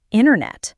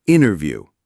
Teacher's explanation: The T just vanishes, making it sound like the N is directly followed by the next syllable. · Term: dropped T